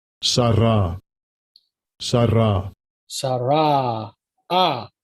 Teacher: Originally, it did not have a ah sound. It had an eh sound, but it became ah over time.